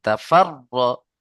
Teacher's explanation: রয়ের উপরে তাসদীদ, র কে দুবার পড়তে হবে